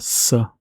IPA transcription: s